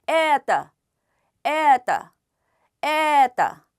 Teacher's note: 에를 강조하다 보면 뒤에 있는 떠는 아처럼 들리는 것입니다